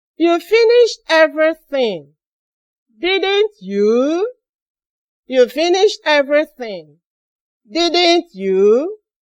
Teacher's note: We use falling tone to answer tag questions. And we use rising tone to ask tag questions.